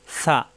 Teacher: জিব্বার আগা দাঁতের আগায় সা